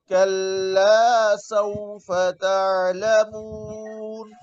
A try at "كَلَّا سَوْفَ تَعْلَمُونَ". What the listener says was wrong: आइन में कलकला ना करे।